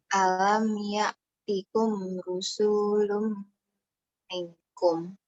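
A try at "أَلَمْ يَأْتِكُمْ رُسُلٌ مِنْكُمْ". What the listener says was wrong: Nah, itu rusu, sunya pendek. Harus pendek. Alam ya'tikum rusulum minkum.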